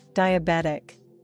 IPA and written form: ˌdaɪ əˈbɛt ɪk (Diabetic)